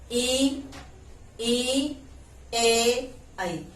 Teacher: इनका उच्चारण करते समय हमारी जिह्वा का आगे वाला जो हिस्सा है वह क्रियाशील रहता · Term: अग्र